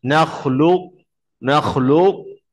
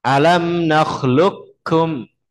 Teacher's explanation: Nakis itu berarti qafnya masih ada sedikit sifatnya. Yaitu apa? Sifat isti'lahnya masih ada. Jadi bacanya nakhluk, nakhluk, suaranya masih naik dikit.